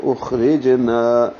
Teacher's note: را باریک ہے، جیم پہ قلقلہ ہے ، اخرجنا، نا الف مدہ ہے، 2 حرکات لمبا کریں گے،